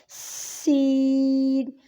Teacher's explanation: پہلی شکل ہے سین، کیسے پڑھیں گے؟ سختی اور سیٹی کے ساتھ ادائیگی ہوگی